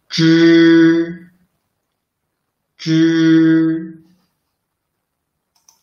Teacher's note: They are pronounced by rolling up the tip of the tongue close to the hard palate. Zh should force the air out through the narrow channel between the tongue and the hard palate.